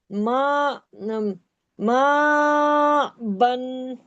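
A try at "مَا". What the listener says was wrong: मा आ, हमजा खड़ा जबर। मा आ। देखिए माँ, मीम को मत खींचे ना, हमजा को खींचे।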